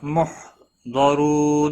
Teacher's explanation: محضرون ضاد حروف مستعلیہ میں سے ہے، پر پڑھا جائے گا، را پیش کی وجہ سے پر پڑھا جائے گا۔ رو واو مدہ ہے، ایک الف کے برابر کھینچ کر پڑھیں گے، نون وقف کی صورت میں نون ساکن پڑھا جائے گا، وقف بالاسکان ہوگا، 3 سے 5 الف کے برابر کھینچ کر وقف کریں گے۔